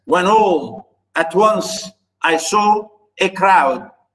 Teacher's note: unstressed stressed unstressed stress unstressed stress unstressed stress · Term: tetrameter